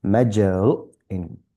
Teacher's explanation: followed by hamza with sukoon, so that's a stop